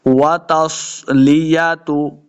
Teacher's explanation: दोनों होंठ गोल करेंगे, तब वाव का मखरज सही अदा होगा।